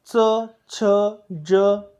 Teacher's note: हे शब्द उच्चारताना आपली जीभ टाळूला लागते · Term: तालव्य